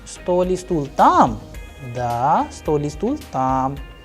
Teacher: Here in the last example, you can also see that while we are using the conjunction E, we are using E, but we are pronouncing the entire sentence without any break